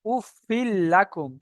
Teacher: তানবিনের পরে লাম চলে এসছে মানে বিনা গুনা জাহির করে পড়ব